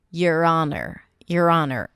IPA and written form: jər ˈɑːnər (your honor)